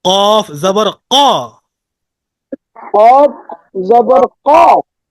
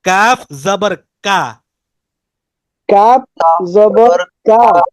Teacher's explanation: কফটা তো যে গোড়াটা তার বরাবর উপরে তালুর সাথে লাগিয়ে উচ্চারিত হয় কিন্তু কাফটা জিহ্বার গোড়া থেকে একটু আগে বাড়াইয়া অর্থাৎ জিহ্বার মাঝখানেও না একবারে গোড়াতেও না গোড়া এবং মাঝখানের মাঝামাঝি